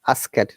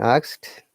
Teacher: you're saying asked okay uh this e should be like i and d should be like t